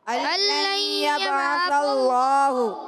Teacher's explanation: با حرف قلقلہ میں سے قلقلہ ہوگا، آواز لوڈ کرائے گی، عین کی ادائیگی الگ کے درمیان والے حصے سے۔ · اللہ کے لام سے پہلے، اللہ پاک کے لام سے پہلے زبر آیا، اللہ پاک کا لام موٹا کریں گے، پر پڑھیں گے